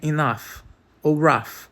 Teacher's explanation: Eles tentaram substituir aquele arranhão por algo mais fácil de produzir, apenas com os lábios e os dentes. O som de garganta pulou para a frente da boca e virou um F. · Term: som de f